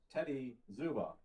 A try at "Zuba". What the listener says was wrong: So I learned it's actually pronounced Juba. I used to say it the same way, as did most people.